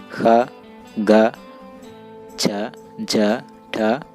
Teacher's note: जिन वर्णों के उच्चारण में मुख से निकलने वाली श्वास की मात्रा अधिक होती है, महाप्राण कहलाते हैं।